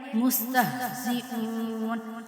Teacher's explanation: ہا کو سختی کے ساتھ، ہا کو جو ہے وہ حلق سے نکالیں گے